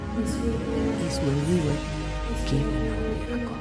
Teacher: Although there is a pause after this river, her tone remains relatively flat and steady throughout the sentence. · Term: level tone